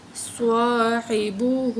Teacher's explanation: ہا کے اوپر الٹا پیش ہے تو ایک الف کے برابر کھینچ کے پڑھیں گے